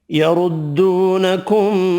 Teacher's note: را پیش کی وجہ سے پر پڑھیں گے